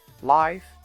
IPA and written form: laɪf (life)